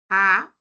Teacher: el fonema vocálico a según el desplazamiento de la lengua es central porque se queda en el medio exactamente debajo del paladar